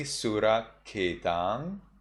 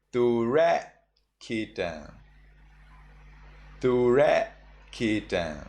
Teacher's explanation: In Sri Lanka pronunciation, you say Suraketang. In Burmese, you say Turaketang.